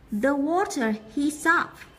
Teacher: cái cụm từ này sẽ nối âm thành heat up